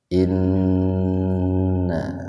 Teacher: Inna gunnah, nun bertasdid itu gunnah. Gunnah itu artinya mendengung, biar terdengar mendengung, tahan dua ketukan.